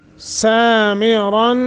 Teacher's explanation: بہی سامرن، سا سین کے اوپر کھڑی زبر ہے، ایک سیکنڈ کی مد کریں گے، را موٹا بھی کریں گے، اور نون تنوین کے بعد حروف اخفا میں سے تا ہے، لہذا اخفا